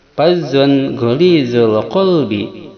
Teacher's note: Walau kunta fazzan ghalizal qalbi lam faddu. Fazzon hukumnya idhar, dibaca jelas dikarenakan tanwin patah bertemu goin.